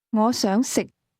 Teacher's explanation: Did you match the low-level tone in the word to eat?